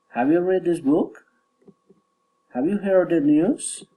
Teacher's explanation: General question, rising intonation.